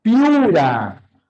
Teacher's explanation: cuando las vocales cerradas distintas se juntan la mayor fuerza de voz siempre recae en la segunda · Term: diptongo creciente